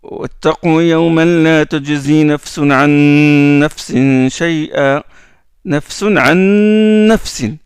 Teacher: on prolonge un peu le noun avec une nasalisation. On sort ce noun là avec le nez.